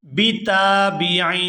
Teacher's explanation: یہاں تا کو الف مدہ کی وجہ سے کھینچ کر ادا کریں گے۔